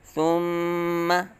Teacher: میم مشدد متحرک ہے تو فوراً یہاں آواز ختم کر دیں گے